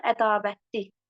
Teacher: Tələffüzdə yenə r düşür olur ədavətli.